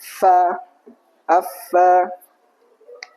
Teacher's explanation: Fa makhrajnya bibir bawah itu menempel ke gigi atas. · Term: huruf fa